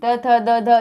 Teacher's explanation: ठीक है, दंत से ये दंत यानी दांत, आप खुद देखिए, त थ द ध ये बोलेंगे आप तो आपको फील होगा कि आपके दांत टच हो रहे हो